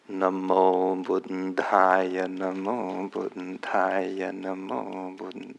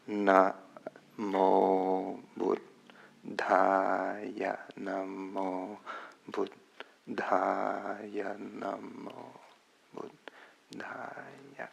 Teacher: the long syllables are exactly twice the length of time as the short ones. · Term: short and long syllables